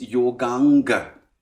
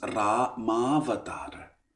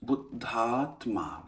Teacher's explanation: the vowel a followed by the vowel a merges into one long a. So yoga followed by anga becomes yoganga.